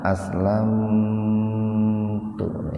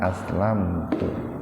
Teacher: Ini aslamtu ini mim mati ketemu ta, dikarenakan dalam satu kata maka tidak dibaca idhar safawi. Jadi mimnya tidak dibaca jelas di bibir, dalam arti dibaca, mimnya dibaca tapi sepintas saja. Alasannya karena mim mati ketemu taknya dalam satu kata.